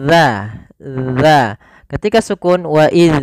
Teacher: Jangan sampai kita memantulkan huruf dalal ketika melafalkan dalal sukun